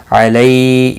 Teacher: علی یا لین ہے، تھوڑا نرمی کے ساتھ کھینچ کر ادا کریں گے